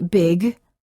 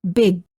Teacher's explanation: sound G don't say big say big hold the final g Sound by making sure that your tongue remains up in the back of the mouth when you're done saying the word words for practice final P